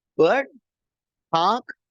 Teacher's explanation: look at the way R is not pronounced in words such as bird, park